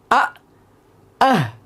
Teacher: এক নাম্বার মাখরাজ হামজা হালকের শুরু হতে উচ্চারিত হয়